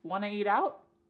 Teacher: we could cut off that first word y completely and just say want to eat out